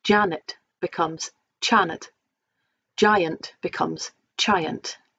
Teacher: soft G at the beginning of a word becomes CH